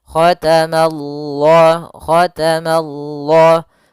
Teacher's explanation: Ma-nya tipis, Allah-nya tebal. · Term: lafzul jalalah